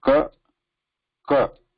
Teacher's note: There should not be any vibration mixed with when we are saying ka.